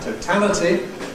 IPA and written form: təʊˈtæləti (totality)